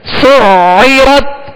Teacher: عین کو وسط حلق سے ادا کرنا ہے